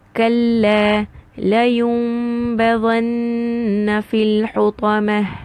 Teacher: You can also have it in one word. If a noon sakin is followed by the alphabet ba, I will change it into a meme. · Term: iqlab